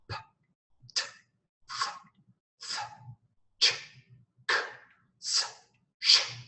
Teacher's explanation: to your throat and say the sound p t s sh okay not one vibration from your throat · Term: un voiced